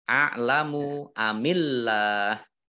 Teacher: Allahnya dibaca tipis karena harokat di depannya kasroh. Nah, kemudian lam fathah berdiri, mat tabi'i, tetapi karena bertemu dengan huruf terakhir yang dibaca sukun karena waqaf, maka menjadi mat arif lis sukun.